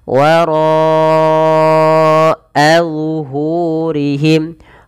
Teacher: A' ro 'that dibaca tebal karena memiliki vokal fathah. Dan 'ro' itu sendiri memiliki bacaan mad wajib muttasil, sehingga 'ro' diperpanjang empat harakat. · Kemudian pada lafal wara'a zuhurihim ka'annahum, pada lafal ro-nya tebal karena dia ro tafkhim, ro yang dibaca dengan tebal karena dia berharakat fathah. Dan ro sendiri punya bacaan mad wajib muttasil, maka ro dipanjangkan 4 harakat.